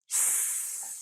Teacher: But where they differ is voicing. The S consonant is a voiceless consonant, which means it is made with just air passing through the vocal cords and out of the mouth. The vocal cords are turned off as you say this sound. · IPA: /s/